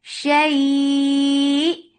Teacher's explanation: This will be 4 counts long because this is mad lean.